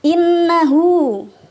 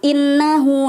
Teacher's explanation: Gunnahnya ini termasuk gunnah musyaddah yang dibaca panjang 2 atau ditekan 2 harokat, didengungkan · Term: idgham bi gunnah